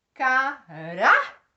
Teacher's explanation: Por exemplo, caráter. Olha o rá sendo a sílaba mais forte. E nesse caso, ele é a penúltima sílaba dessa palavra. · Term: Paroxítona